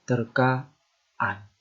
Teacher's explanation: Jadi ada semacam hambatan dalam kerongkongan. Sebelum sampai kepada bunyi a ini dan setelah bunyi a pada kata terka. · akibat pertemuan morfem an, ke an dan penasal an dengan bentuk dasarnya terjadi penambahan fonem glotal. Kalau bentuk dasar itu berakhir dengan vokal A. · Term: bunyi glotal